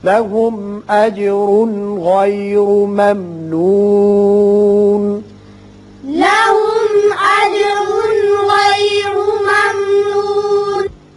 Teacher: यहाँ तनवीन के बाद गाइन है, यहाँ इजहार हल्की होगा · इस मीम पर इजहार होगा, इजहार शफवी।